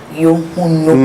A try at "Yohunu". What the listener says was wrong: No, it ends with O. So if you can pronounce the O very well, that becomes Yohunu. Yohunu.